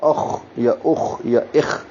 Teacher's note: خا پہ ہمس ہے، یہ کھردرا ہے، یہ قاف اور کاف سے ذرا ہٹ کر یعنی آگے حلق کی جانب، حلق کا جو ابتدائیہ حصہ ہے اسے ادنی حلق کہتے ہیں، اس میں سے یہ نکلتا ہے